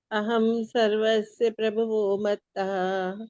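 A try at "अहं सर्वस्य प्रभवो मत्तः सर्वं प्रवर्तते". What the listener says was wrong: मत्तः नहीं है माता जी, मत्तः बाद में है।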